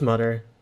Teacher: Another thing Irish English and Newfoundland English have in common is dropping the TH sounds in words. Mother becomes mutter, this becomes this.